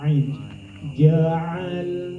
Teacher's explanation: ain di tengah tenggorokan ini huruf di tenggorokan namanya huruf halqi · ain itu ya di tengah tenggorokan